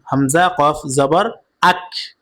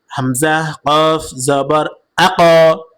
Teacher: প্রতিধ্বনি আওয়াজ দিয়ে পড়তে হবে। ধাক্কা দিয়ে পড়তে হবে।